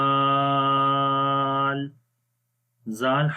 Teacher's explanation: زال حرف کو بھی وہاں سے ہی پڑھنا ہے جہاں سے ہم نے سا حرف پڑھا ہے, یعنی کہ نرم پڑھیں گے